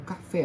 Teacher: o fé é a sílaba forte a sílaba tônica é a última sílaba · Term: palavra oxítona